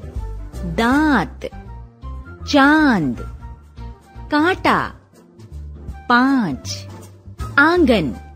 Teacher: इसे अनुनासिक स्वर कहते हैं। इसका उच्चारण नाक और गले दोनों से होता है।